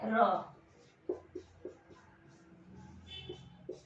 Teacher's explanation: र की sound produce करते हैं तो हमारी जीवा है ये गोल घूमती है। ठीक है, बेलन की तरह, जो लाठी होती है उसकी तरह, तो इसको कहते हैं लुंठित।